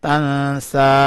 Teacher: تا نون زبر تن سین کھڑی زبر سا تن سا. نون کے اوپر اخفا کرنا ہے. نون کو یعنی تھوڑا سا چھپانا ہے.